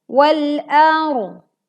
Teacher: ro-nya dibaca tebal karena didahului fathah. Wal ar, tidak dibaca wal ar, tetapi wal ar.